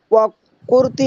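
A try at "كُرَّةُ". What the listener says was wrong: কুরতি না, ওয়া কুররাতু, তাসদীদ দেওয়া নাই এখানে, এখানে তাসদীদ দিয়ে পড়তে হবে।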